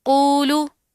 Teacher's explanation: واو ساکن اس کے ماقبل کیا ہے، قوف کے اوپر پیش ہے، تو اس کو تھوڑا سا کھینچیں گے